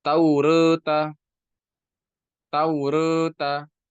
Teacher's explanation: Membaca harakat fathah dan kasrah namun lebih condong kepada fathah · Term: taklil